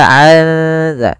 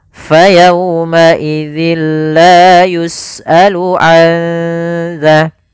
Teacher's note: nun mati bertemu dengan zal yang mana zal termasuk huruf ikhfa, maka suara nunnya samarkan ke makhraj huruf zal. Maka aza sembari ditahan suara dengungannya sepanjang 2 harokat.